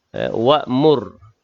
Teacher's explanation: Cuma kalau kita nak perhatikan hukum ra lah. Wa'mur, ra yang sukun, kalimah wa'mur tafkhim tebal